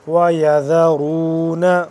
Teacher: والذین واو لام زبر واللام زبر لا، والذین دال کو نرمی سے پڑھیں گے، والذین یتوفون منکم ویذرون دال کو نرمی سے پڑھیں گے اور را کو پر کر کے پڑھیں گے